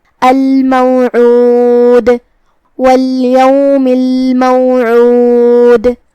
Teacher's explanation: ہم عین کو حلق کے درمیان والے حصے سے ادا کریں گے · ہم اس پہ روکیں گے تو دال پہ جزم سے روکیں گے لہذا یہاں دال کا حکم ہوا قلقلہ تو ہم دال کو ہلاتے ہوئے یہ کلمہ کو ادا کریں گے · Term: حرف العین